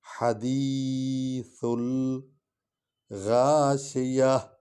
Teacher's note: زبان سامنے والے ہونٹوں کے ساتھ دانتوں کے ساتھ آ کر ثنایا الیہ کے ساتھ لگتی ہے، ثا ادا ہوتا ہے